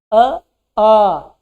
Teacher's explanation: ठीक है, फिर आते हैं आ के बाद हम बोलते हैं बड़ा, आ। जैसे बड़ा आ बोलते हैं जीभ पीछे की तरफ भागने लगती है। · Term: पश्च